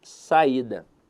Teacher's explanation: Veja que a sílaba tônica dela está na penúltima sílaba. Então, a verdade é que a palavra saída é uma paroxítona.